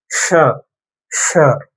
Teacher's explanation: இந்த நாக்க நல்லா மடிச்சு மேலத்தோட பின்பகுதியை தொடங்கும். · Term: மூர்தா